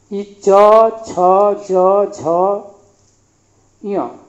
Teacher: चवर्ग तो देखेंगे कि कंठ के ठीक बाद तालु, यानी चवर्ग जो होगा इसका उच्चारण स्थान हो जाएगा तालु